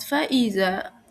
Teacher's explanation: Nah, dalam kalimat fa'iza hukum tajwidnya itu mat tabi'i. Karena huruf zal berharokat fathah bertemu alif, cara bacanya yaitu dipanjangkan 2 harokat.